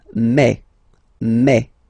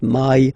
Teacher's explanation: French remember when you combine this a and then e vowels you get the sound e e so really open E